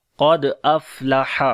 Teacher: क़ाफ को मोटा पढ़ेंगे, दाल के ऊपर कलकला करेंगे, कमज़ोर कलकला होगा